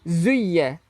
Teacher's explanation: Zai ni kita kecipkan gigi nah. Kita tak perlu keluarkan hujung lidah. Yang ni zai, bukan zal.